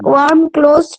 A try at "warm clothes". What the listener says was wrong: One close হয়ে গেছে, one close হয়ে গেছে, ওটা ওয়ার্ম ক্লোজে চলে যাবে।